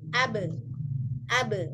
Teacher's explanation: yang ba itu di bagian bibir yang kering